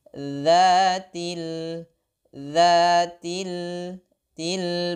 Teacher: huruf 't' tipis di belakang gigi